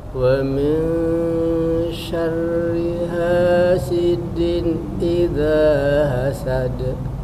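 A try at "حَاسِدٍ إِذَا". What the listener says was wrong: Cuman kurang ditambahin sedikit dengan nun sukunnya. Din idza, hasidin idza, coba.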